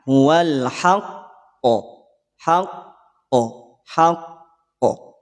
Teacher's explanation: Pada saat memantulkan huruf qaf, tekan, baru pantulkan karena sebab qaf bertasydid. Adanya tasydid menandakan adanya tekanan, ditekan.